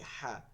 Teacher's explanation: এই যে একটা হা করি হা এইরকম উচ্চারণটা বের করতে হবে আগে বাতাসটা এরপরে হা বলতে হবে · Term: লম্বা হা